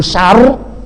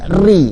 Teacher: Jadi min syar di situ tebal. Terus ketika ri dia tipis.